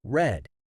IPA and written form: rɛd (read)